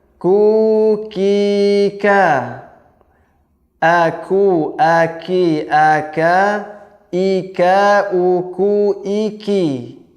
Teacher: huruf kaf, yaitu pangkal lidah ketemu dengan langit-langit yang bertulang dan tak bertulang di tengah-tengahnya